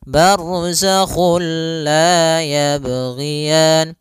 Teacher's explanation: kita memasukkannya secara utuh, secara seluruhan kepada huruf lam, sehingga tidak menyisakan sedikit daripada bunyi huruf nunnya. Ya, sehingga langsung masuk barzakhul la, dan dia bila gunnah berarti tidak boleh disertai dengan gunnah, tidak boleh ada penahanan, tidak boleh barzakhul la, enggak boleh, tapi langsung saja barzakhul la yabghiyan. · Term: idgham bila gunnah